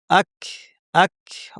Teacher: জিহ্বার সবচেয়ে শেষের অংশ যেখান থেকে কফ উচ্চারিত হয় তার থেকে একটু সামনের জায়গাটা ব্যবহার করে আমাদেরকে কাফটা উচ্চারণ করতে হবে। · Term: কাফের মাখরাজ